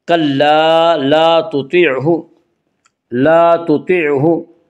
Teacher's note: طا کو پر پڑھیں گے تو حروف مستعلیہ میں سے ہے۔ حروف مستعلیہ 7 ہیں جن کا مجموعہ خص ضغط قز ہے، جو ہمیشہ ہر حال میں پر پڑے جاتے ہیں۔